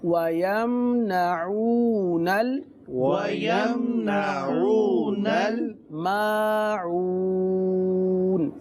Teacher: نون کو لام کے ساتھ ملا کر پڑھیں گے، نل. وَيَمْنَعُونَ وَيَمْنَعُونَ الْمَاعُونَ.